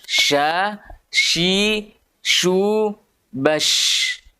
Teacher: Ya, karena sifatnya nanti ada yang namanya tafashi, khusus untuk huruf shin. Tafashi itu artinya terhamburnya udara di dalam mulut.